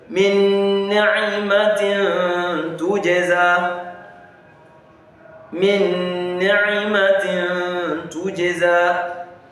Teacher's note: we now inserted the nun sukun into the nun kasra, and it now becomes as if it's one nun that is there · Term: Idgham